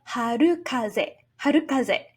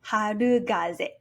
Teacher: In harukaze, the latter part of the word already has a voiced sound, ze. That's why we have harukaze, harukaze, and not harugaze.